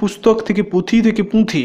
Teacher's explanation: যে শব্দ মধ্যে নাসিক্য ব্যঞ্জন না থাকলেও অনেক সময় কোনো কোনো স্বরধ্বনি আপনা থেকে অনুনাসিক হয়ে যায়